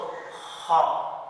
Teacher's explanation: जब भी हम खा की अदायगी करेंगे तो हम हलक के दरमियान वाले हिस्से से पढ़ेंगे